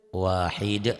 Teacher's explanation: ujungnya tidak dibaca, jadi dihentikan